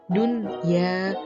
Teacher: Akan tetapi terdapat pengecualian ketika nun sukun bertemu dengan ya atau waw dalam satu kata. Huruf nun sukun tetap dibaca jelas atau tidak dimasukkan ke huruf ya atau waw. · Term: izhar wajib